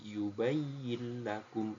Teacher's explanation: tapi yubayakum langsung masuk ke huruf lamnya